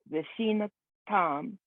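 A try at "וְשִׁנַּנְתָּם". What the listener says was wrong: Nan, so there's a double nun, so vishinan tam.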